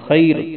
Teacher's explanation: خا کو موٹا پڑھنا ہے، را کو بھی موٹا پڑھنا ہے